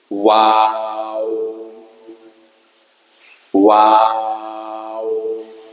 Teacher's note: ঠোঁট গোল করে করব, দুই ঠোঁট হইতে। ওয়াও ওয়াও লম্বা হবে, একাধিক অক্ষর লাগে বাংলায় লিখতে।